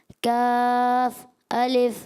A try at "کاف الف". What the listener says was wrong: کاف کو کھینچے, کاف الف